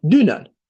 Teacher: Dünən vurğu birinci hecadadır. Dünən demirik.